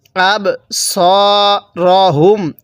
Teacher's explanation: সয়ের মধ্যে এক আলিফ টান, জবরের পরে খালি আলিফ থাকলে এক আলিফ টানতে হয়।